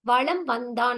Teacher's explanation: மகர மெய் எழுத்தை அடுத்து வகர எழுத்து வந்துருச்சு அப்படின்னா, இந்த மகர மெய்யானது தனக்குரிய அரை மாத்திரை அளவிலிருந்து குறைந்து கால் மாத்திரை அளவாக ஒலிக்கிறது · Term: மகர குறுக்கம்